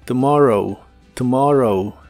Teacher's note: Y usaremos la palabra tomorrow, que significa mañana. La primera O se pronuncia como una U muy suave y corta.